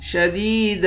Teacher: دال کو یا کے ساتھ ملا کر یا کو ایک الف کے برابر کھینچیں گے. یا حروف مدہ ہے، آخر میں دو زبر کی تنوین ہے.